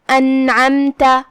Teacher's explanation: اظہار کا معنی ہے ظاہر کرنا، تو ہم نون کو ظاہر کر کے بغیر غنہ کے حکم کو ادا کریں گے · عین کی ادائیگی حلق کے درمیان والے حصے سے ہے · کلمت انعمت یہاں حمزت قطع ہے، مطلب ہم اسے ظاہر کریں گے، اور جو کہ حمزہ کی ادائیگی حلق کے نیچے والے حصے سے ہے